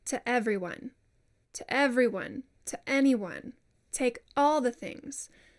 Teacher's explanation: when you have a vowel at the end of one word and the start of another word, it's very common to close the throat between those two things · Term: glottal stop